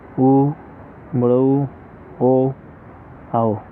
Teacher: ओठाकृति के आधार पर। वृत्ताकार जिनके उच्चारण में होठों की आकृति वृत्त के समान बनती है